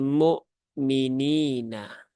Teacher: Ya Sukun setelah kasrah maka nya terbaca dua harakat ya atau kita kenal dengan mad asli atau Mad thi'i ya Mad